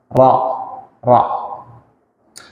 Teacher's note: Ro itu ujung lidah dengan gusi. Gusi depan. Atas ya, bukan pertemuan, atas.